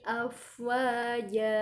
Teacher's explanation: Jadi ketika kita menemukan huruf yang bertanda fathah tain di akhir ayat, maka cara membacanya seperti membaca huruf ja berharokat fathah yang dipanjangkan, dan panjangnya selama 2 harokat